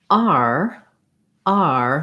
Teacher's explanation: my tongue starts in a more central and more open position and then glides into that tight er so i always end up on er but for r r